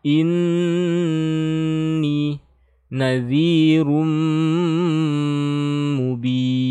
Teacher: Tasydidnya digunnahkan, ditahan ya, sekitar 3 harokat. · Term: idgham bi gunnah